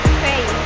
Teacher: EI, like the EI in English, they, but shorter and denser, unlike English, where the E is emphasized over the I. In Mandarin, the E and I are given equal prominence.